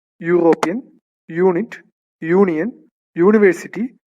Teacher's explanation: O യു എന്ന് നമ്മൾ ഇംഗ്ലീഷിൽ വ്വൽ ലെറ്റേഴ്സ് എന്ന് പറയുന്ന ലെറ്റേഴ്സിനാണ് തുടങ്ങുന്നതെങ്കിലും അവ വായിക്കുമ്പോൾ യ എന്ന ശബ്ദമാണ് ഉണ്ടാകുന്നത് യ എന്ന ശബ്ദം വ്യഞ്ജനാക്ഷരമാണ് അതുപോലെതന്നെ കൺസോണന്റ് സൗണ്ടിൽ വരുന്നതാണ് അതുകൊണ്ടാണ് ഈ വാക്കുകൾക്ക്